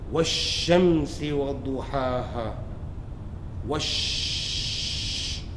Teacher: So Shamsiya letters are the letters when they follow the Lam of Ta'rif, Alif Lam, okay, the Lam of Ta'rif is not read, but assimilated, done idgham with the Shamsiya letters